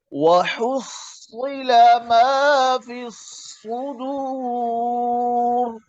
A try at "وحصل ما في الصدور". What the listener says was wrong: माशाल्लाह बेहतर है, बहुत अच्छा हो गया पहले से।